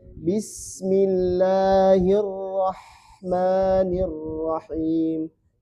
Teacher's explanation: Sin ini sifatnya harus mengalir terus. Sampai ke mim.